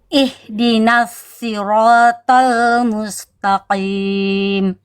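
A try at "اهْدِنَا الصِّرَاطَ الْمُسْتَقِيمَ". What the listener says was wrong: Musta tipis lagi tnya bunda ya. Jangan th tapi ta.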